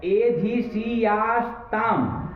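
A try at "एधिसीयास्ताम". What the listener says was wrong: अब मूर्धन्य क्यों बोल रहे हो? दंत्य बोलो उसको, सूट को सकार दंत्य रहेगा ना।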